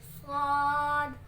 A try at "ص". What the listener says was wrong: اس کے آخر میں دال کی ساؤنڈ نکالو نا. صاد. موٹا کر کے بیٹے سیٹی کی آواز کے ساتھ. صاد.